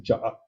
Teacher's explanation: hay un doble glotal un glotal en medio y glotal final